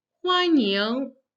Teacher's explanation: So we have the first verb to welcome, 欢 迎, the first and the second tone.